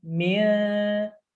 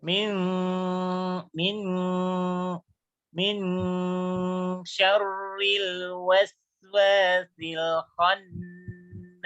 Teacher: Dengungnya dilamakan itu huruf N. N bukan ming, bukan NG, bukan NG, tapi huruf N saja.